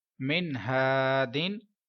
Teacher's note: इधर अलिफ मद्दा है क्योंकि अलिफ से पहले जबर है, तो आप 1 अलिफ मीन 1 सेकंड लंबा करेंगे। मीम नून जेर मिन, हा अलिफ जबर हा, दाल दो जेर दिन, हा दिन, मिन हा दिन।